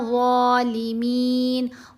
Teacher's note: Lips को आपने गोल shape में लेके आना है, ज़ुबान को दांतों के दरमियान में रखना है। ज़ुबान जब ऊपर वाले दांतों को हल्का सा टच करेगी तो इसकी आवाज़ बेहतर पैदा होगी